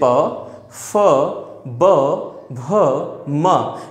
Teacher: ये पांचों हमारे जो भी व्यंजन हैं ये ओष्ठ से उच्चारित किए जाते हैं,